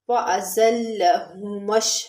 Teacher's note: ذال جو ہوتا ہے وہ نرمی کے ساتھ، بالکل نرمی کے ساتھ، یعنی اس کے اندر سیٹی کی آواز نہیں آنی چاہیے، جیسے ہاذہ میں ذال ہے اور یہ زا ہے، زا اس کے اندر سیٹی کی آواز آنی چاہیے۔ اور لام کے اوپر تشدید ہے تو اس کو ایک دفعہ زا کے ساتھ ملا کے پڑھیں گے اور ایک دفعہ اس کی اپنی حرکت کے ساتھ